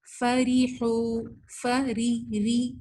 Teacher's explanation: را یہاں پہ زیر کے ساتھ پتلا پڑھا جائے گا